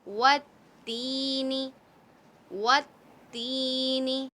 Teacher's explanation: ती को हम खींच कर पढ़ेंगे। ती, एक अलिफ की मकदार खींचेंगे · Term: मद्दा